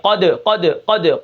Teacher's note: قاف کے شروع میں ہی دیکھیں تھوڑا سا قلقلہ ہے، بہت کم درجے کا ہے